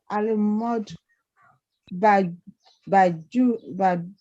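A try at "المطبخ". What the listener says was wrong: It is kha, not Jim. It is kha. I said it is not Jim. It is not Jim. It is kha. Al-matubakhu. Al-matbahu.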